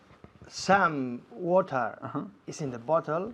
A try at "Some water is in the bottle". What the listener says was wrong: Fantástico, me encanta como dices some, con esta M tan fuerte.